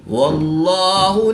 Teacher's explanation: لام سے پہلے واو پر زبر ہے تو اس لیے اس لام کو پور یعنی موٹا پڑھیں گے